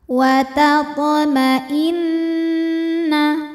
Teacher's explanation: atau wajibul gunah atau Nun musyaddadah sebab nunnya bertasdid cara bacanya Nun didengungkan tahan dengungannya kurang lebih dua harakat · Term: gunah musyaddadah